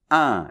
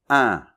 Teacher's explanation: Un peu comme est, mais ça vibre plus dans le nez ici. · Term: la nasale 1